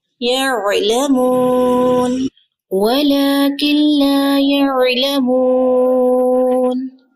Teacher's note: عین کا مخرج آپ نے پڑھا نا، وسط حلق سے ادا ہوتا ہے. فنگر رکھیں گلے پر.